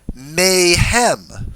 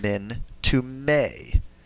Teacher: The may is clearly the preposition min, but with the noon trying to assimilate into the guttural hey, not being able to, and so you have compensatory lengthening of the hirek